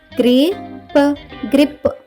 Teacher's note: సిఆర్ఏ యొక్క శబ్దం క్రియ కాబట్టి సిఆర్ఏబి యొక్క ఉచ్చారణ అవుతుంది క్రాబ్ క్రాబ్ అంటే పీత తర్వాత పదం చూద్దాం పదం జిఆర్ ఐపి పిల్లలు ఈ పదంలో కూడా జి మరియు ఆర్ అనే రెండు హల్లులు జంటగా వచ్చాయి. వీటి మధ్య ఎలాంటి ఓవెల్ లేదు కాబట్టి జిఆర్ యొక్క శబ్దం ఘర్ కాకుండా గ్ర అవుతుంది.